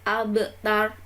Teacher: Abtar di situ ada qalqalah sugro, harus dipantulkan